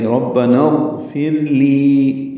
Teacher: ربنا میں را کو پر پڑھیں گے، با سے ملائیں گے، نا الف مدہ ہے لیکن اغفر لی کا حمزہ عارضی ہے، نون کو غین سے ملا دیں گے، ربنا اغفر ہو جائے گا، غین پر پڑھیں گے، فا کو را سے ملائیں گے، را باریک ہوئے گی · لی یا مدہ ہے 2 حرکات لمبا کریں گے